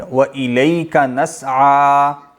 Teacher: نسعیٰ میں چونکہ کھڑی زبر ہے تو اس کو ایک الف کے برابر لمبا کریں گے